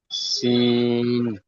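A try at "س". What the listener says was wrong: সিন দুটি অক্ষরের উচ্চারণ একই হয়ে যাচ্ছে প্রথমটি হবে সিন তারপর অক্ষরটি একটু চেপে মোটা আওয়াজে বলবেন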